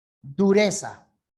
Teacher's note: Surge el sonido de la Z, el sonido interdental